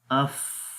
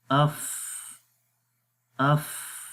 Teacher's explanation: تو آخر میں دیکھیں سانس جاری ہو رہا ہے